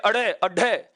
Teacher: इसका उच्चारण करते समय जीभ इतना झटका खाती है, ऐसे लग रहा है जैसे मुंह से बाहर फेंके जा रहे हों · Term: उत्क्षिप्त व्यंजन